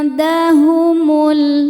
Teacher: nun disamarkan ke dal disertai dengungan. Ini dengungnya sedikit ya, karena dal makhrajnya masih dekat dengan nun. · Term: ikhfa aqrab